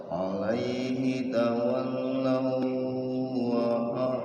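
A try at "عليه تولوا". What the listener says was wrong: Enggak ditahan. Waw ketemu waw namanya idgham mutamatsilain, bukan idgham bigunnah ya. Jadi langsung masuk ke waw yang depannya. Alaihi tawallaw wa langsung.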